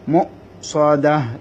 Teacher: আমি আপনাদেরকে পূর্বে বলেছি যে অক্ষরের উপরে হামজা হবে ওইখানে হামজাটা উচ্চারিত হবে, এখানে ওয়াওর উপরে হামজা এসেছে তাই হামজাটা উচ্চারিত হবে, এখানে একটু ধাক্কা হবে